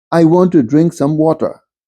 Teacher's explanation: Water is post vocalic R left unpronounced, not articulated.